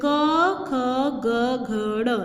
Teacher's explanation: जब हम क बोलते हैं तो हमारे जो ये कंठ होता है, गला होता है, वो पूरा हिलता है। क, ख, वहाँ से कंठ से आवाज़ निकलती है ग घ ड़, ठीक है।